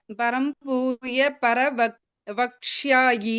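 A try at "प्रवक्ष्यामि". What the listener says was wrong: பிரவக்ஷ்யாமி, பர இல்ல மாதாஜி, பிரவக்ஷ்யாமி.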